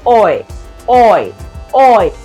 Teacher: you the third sound it is known as a diff thong the first sound is much longer and stronger than that of the second one · the first sound is gliding onto the other one